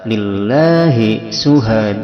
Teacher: lillah la itu adalah mad ta'zim yang panjangnya sebagaimana mad jaiz munfasil, bisa 2 sampai 5 harokat